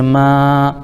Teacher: میم الف زبر ما الف مدہ ہو جائے گا، اس کو ایک الف کھینچیں گے